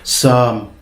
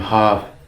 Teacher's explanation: the M at the end was very weak in Gaulish and became gradually a V sound